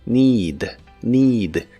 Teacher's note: Se pronuncia con la i larga o doble